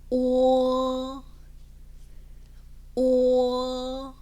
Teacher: 입 모양도 처음에는 오로 시작해서 끝날 때는 약간 으어라는 소리에 가깝게 낸다는 거죠